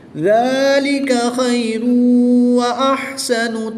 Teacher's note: 2 پیش کی تنوین کے بعد واو حروف یرملون میں سے ہے تو یہاں پر ادغام مع الغنہ ہو رہا ہے، یہاں پر بھی غنہ کر کے پڑھیں گے